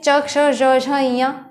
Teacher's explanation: हमारी जो जिह्वा है वो तालु पे जा करके लड़ती है, ऊपर तालु पे जा कर लड़ती है, और जो वायु है वहाँ से निकलती है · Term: तालव्य ध्वनियाँ